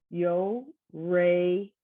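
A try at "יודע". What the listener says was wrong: That's a dalid, not a resh. Yodea.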